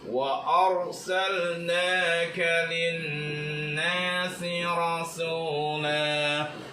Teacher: Maka cara membaca lamnya, lam matinya itu harus dibaca dengan idhar, harus dibaca dengan jelas. Karena ini lam fi'il madhi, lam matinya harus dibaca jelas.